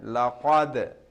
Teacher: So lam, so over here we have qalqala, dal has sukun, that's why laqad, jerking sound, echoing sound